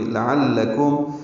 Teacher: عین وسط حلق سے ادا ہوگا ، کاف باریک ہے، میم ساکن پہ اظہار شفوی ہے، تفلحون